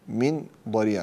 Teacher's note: من ضريع نون ساكنة من بعدها الضاد فهي إخفاء حقيقي